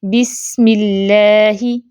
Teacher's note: زیر ہے، کسرہ ہے، تو اس اللہ کے لام کو باریک پڑھیں گے، بسم اللہ۔ اب اس کو بسم اللہ ایسے نہیں پڑھیں گے، ٹھیک ہے۔